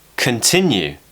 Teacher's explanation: we've got the schwa in the first syllable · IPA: /ə/